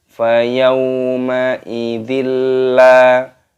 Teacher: Fayaw, wawu sukun dibaca fayawma idzin la, kasrah tanwin bertemu dengan huruf lam, alif, ini dibaca idgham bila gunnah. Idgham itu artinya memasukkan, bila gunnah tanpa berdengung, dan di sini lam alifnya dibaca panjang.